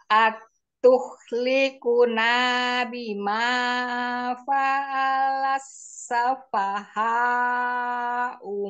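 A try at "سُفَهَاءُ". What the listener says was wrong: Sufaha minna tetap Umi. Su tadi Umi pakai fathah. Sufaha. Jangan, ini jangan panjang. Su ini jangan panjang. Langsung ke fa. Sufaha.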